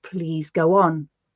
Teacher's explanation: a sound can even sneak in where there is no written letter w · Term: W sound